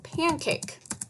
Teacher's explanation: you hear the short A vowel sound in pan. You hear the long A vowel sound in cake.